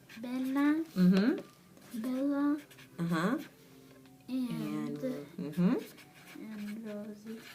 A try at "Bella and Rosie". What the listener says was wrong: That's right.